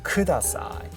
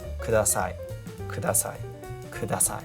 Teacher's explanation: There is no stress. Actually, it's much flatter than you think. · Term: very, very flat